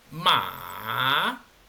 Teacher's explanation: Desciende y luego asciende, formando una especie de curva en el sonido. Entonces, al igual que su tilde, es un sonido que baja y luego sube. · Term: tercer tono, tono 3